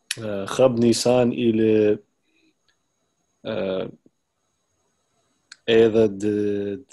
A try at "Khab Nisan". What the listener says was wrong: All right, you said Nisan. That is the Arabic accent. You should say Khab Nisan, not Nisan. Khab Nisan ili eda dresh shatan.